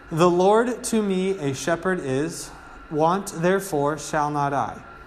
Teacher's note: He in the folds of tender grass doth cause me down to lie." Okay, so remember, it's a pattern of 8 syllables, 6 syllables, with an unstressed and then a stressed.